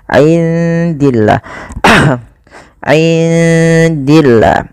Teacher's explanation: Lafal Allah kalau didahului dengan kasrah tidak boleh dibaca tebal, tidak boleh dibaca dengan min indillah, tidak, tapi dia dibaca dengan bacaan tipis. · Kemudian pada lafal indillah, indi di sini ada bacaan ikhfa, maka suara nunnya samarkan kepada huruf dal